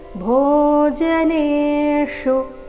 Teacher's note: ಕೊನೆಗೆ ಶು ಮೂರ್ಧನ್ಯ ಶ ಉಕಾರದೊಂದಿಗೆ ಹ್ರಸ್ವ